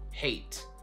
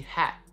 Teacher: we basically go from hate with an A sound, a diphthong A, to a. Hat, just a straight up, just one sound.